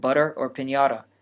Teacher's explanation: spanish also has a flapped or tapped r we use this as a t in english